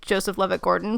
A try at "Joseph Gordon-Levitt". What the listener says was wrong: Joseph Gordon-Levitt on Third Rock from the Sun? No, you said Joseph Levitt-Gordon.